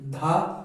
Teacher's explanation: देखो जीभ दांत के पास जा रही है तो ये दांत से उच्चारित हो रहा है